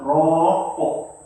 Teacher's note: Tapi bukan rokok tu bunyi kok tu sebab kof tu kita berhenti dia jadi qalqalah.